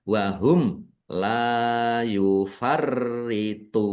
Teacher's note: mim sukun bertemu dengan huruf lam bacaan izhar syafawi dibaca jelas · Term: idhar safawi